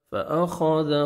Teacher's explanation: خا کو موٹا کر کے پڑھنا ہے، ذال کو نرمی سے ادا کرنا ہے